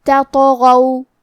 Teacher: تا حروف الترقیق میں سے ہے تو ہمیں تا کو پتلی آواز میں پڑھنا ہے اور تو حروف التفخیم میں سے ہے تو ہم تو کو بھاری آواز میں پڑھیں گے. کیونکہ تو پہ جزم ہے تو بھی حروف القلقلہ میں سے ہے تو ہم یہ حرف کو ہلاتے ہوئے یہ کلمہ کو پڑھیں گے.